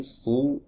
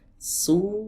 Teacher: tenggorokan terasa menyempit teman-teman saat kita mengucapkan huruf shad. Ya, berbeda dengan huruf sin.